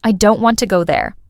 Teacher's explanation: The strong words are don't and go. The smaller words like I to and there. They're said more lightly almost in the background. This creates a rhythm, a natural music in English. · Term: stressed